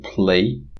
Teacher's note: now in a word like play it becomes devoiced which means that the voicing is subtracted from it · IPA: [pl̥eɪ̯]